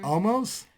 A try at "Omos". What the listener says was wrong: Omos sounds so much better than almost. Sounds like you're saying almost.